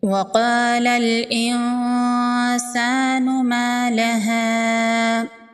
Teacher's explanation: قاف حروف مستعلیہ میں سے ہے، قاف کو پر پڑھیں گے، الف مدہ ہے، ایک الف کے برابر کھینچ کے پڑھیں گے